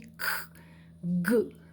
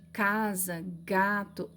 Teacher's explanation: a língua ela recua, vai lá para trás e toca a úvula, que é o prolongamento do palato mole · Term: velar